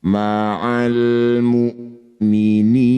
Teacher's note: Ni panjangkan enam harakat huruf terakhir sukunkan. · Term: mad arid bisukun